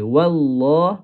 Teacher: Ha bila masuk kepada huruf lam dia kena kekalkan nipis dia tu. Yang kena tebal adalah huruf kalimah lam yang kedua pada kalimah Allah.